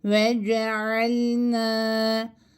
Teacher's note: nun harfini e aa arasında bir sesle bir elif miktarı yani kalemi kaldırıp indirinceye kadar uzatıyoruz